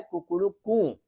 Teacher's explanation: वो पहले जो बोलता है वह ह्रस्व होता है बाद में जो बोलता है वो दीर्घ होता है और जो लास्ट में बोलता है वह पुलुत होता है